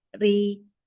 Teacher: Untuk huruf ro-nya, dia dibaca tipis atau tarkik karena berbaris kasroh.